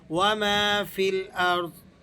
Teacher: یہاں فا کے بعد یہ یا ہے، یہ یا بھی کھینچ کر ادا نہیں کیا جائے گا، بلکہ فا کو ہم لام سے ملا کر پڑھیں گے